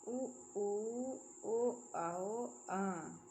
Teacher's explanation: व्रत मुखी स्वर जिन स्वरों के उच्चारण में मुख गोलाकार होता है।